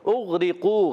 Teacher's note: اغرقوا غین میں قلقلہ نہیں کرنا، غین پر رکھنا ہے. را کے نیچے زیر ہے، باریک ہوگا. قاف واو پیش قو، واو مدہ ہے، قاف کو موٹا بھی رکھنا ہے.